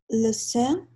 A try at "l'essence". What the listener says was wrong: On va prononcer ici le S final. L'essence.